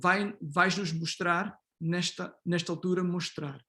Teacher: They get neutralized, either s or sh become z when it becomes the onset of the following syllable, okay? In European Portuguese and African Portuguese, coda S is also sh